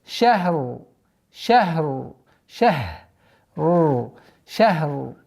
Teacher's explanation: Ра при остановке. Аннулируется огласовка. Уходит сукун. И получается у нас ра здесь твердое.